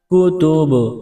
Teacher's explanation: کتب، با پر قلقلہ کریں گے